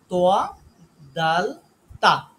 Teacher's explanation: এটা খুবই ইজি আমাদের এই জায়গা থেকে উচ্চারণ হয় খুব সহজেই আমাদের জিহ্বার আগাটা লাগবে হচ্ছে উপরে যে বড় দুইটা দাঁত আছে সেই দুই দাঁতের গোড়া